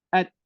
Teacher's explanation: huruf ta ni dia akan keluar bunyi hamas dia bila dia sukun